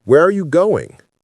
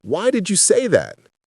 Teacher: Who, what, when, where, why, how, they go down.